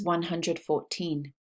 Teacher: the second syllable of the numbers in the first column the teen numbers is stressed